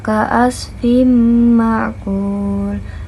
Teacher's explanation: huruf fa yang harokatnya kasrotain bertemu dengan mim berarti hukumnya adalah idgham biguna yang diakhiri dengan mat tabi'i waw yang dibaca dengan 2 harokat.